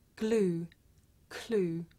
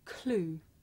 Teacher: the difference between this voiced sound that you hear at the beginning of the word glue and its voiceless partner that you hear at the beginning of the word clue